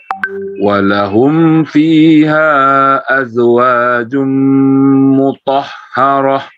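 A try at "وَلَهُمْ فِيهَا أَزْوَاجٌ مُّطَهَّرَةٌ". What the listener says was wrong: Baik, untuk mad jaisnya dipanjangkan lagi sedikit Pak. Walahum fiha azwaj.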